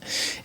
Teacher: there was a little bit of air kind of going through the cords